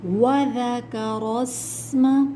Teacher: ذال نرمی والا حرف ہے، زبان دانتوں سے باہر آئے گی، نرمی کے ساتھ پڑھیں گے، سین میں سیٹی کی آواز آئے گی، ٹھیک ہے۔